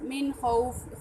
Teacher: خا جو ہے وہ حروف حلقی میں سے ہے، تو یہاں پر اظہار کا قاعدہ لگے گا۔